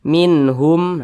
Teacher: dibaca jelas tidak berdengung jadi dibaca pendek saja minhum jangan ditahan tapi dibaca pendek minhum nah seperti itu kemudian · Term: izhar halqi